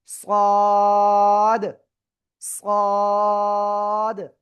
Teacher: জিহ্বার আগা, সামনের নিচে দুই দাঁতের পেট ও আগার সাথে লাগিয়ে একটু মোটা আওয়াজে আমরা এটা উচ্চারণ করব।